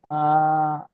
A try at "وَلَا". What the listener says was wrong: ওয়ালা আটা টানছেন কেন, ওয়ালাটা টানবেন, ওয়ালা